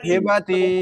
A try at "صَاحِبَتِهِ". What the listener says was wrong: আরে এই টান দিচ্ছে কেন? টান ছাড়া, হিবাতি, হিবাতি হি বলতেছেন একবারে, আচ্ছা বলেন, তাহলে ঠিক আছে।